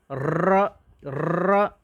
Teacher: कंपन हो रहा है, हमारी जीभ में कंपन हो रहा है। तो प्रकंपित, कपराई, कपराई है भाई हमारी जीभ, तो प्रकंपित या लुंठित स्वर भाई र को कहा जाता है।